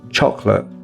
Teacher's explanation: When we're speaking quickly, it may even just come out like choc-late.